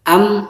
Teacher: Ketika mimnya ditasdidkan, itu dirapatkan bibir atas dengan bawah